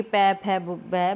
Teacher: जब पै, फै बोलते हैं तो हमारे जो होंठ हैं, लिप्स हैं, वो आपस में मिलते हैं, टकराते हैं, तो ये पै, फै, बै बोला जाता है। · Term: ओष्ठ्य